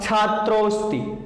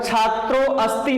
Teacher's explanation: यहां यह अ इसी ओकार में समाहित हो जाता है और इसका उच्चारण होगा छात्रोस्ति। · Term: पूर्व रूप स्वर संधि